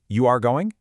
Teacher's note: people just use the normal sentence order and raise their voice at the end